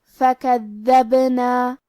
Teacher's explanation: یہاں حرف البا پہ جزم ہے، کیونکہ با بھی حروف القلقلہ میں سے ہے تو ہم یہ حرف کو ہلاتے ہوئے یہ کلمہ کو پڑھیں گے